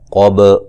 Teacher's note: قاف کو موٹا ادا کریں گے، با پہ قلقلہ ہے، با کو ہلا کے پڑھیں گے